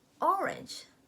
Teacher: the word orange, the stress is on the first syllable